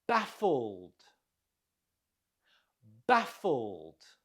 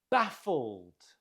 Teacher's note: Note the stress on the first syllable.